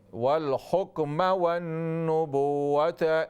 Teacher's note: میم کے زبر کو اسٹریچ نہ کریں، لمبا نہ کریں